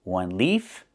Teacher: One leaf with the F sound with no voice.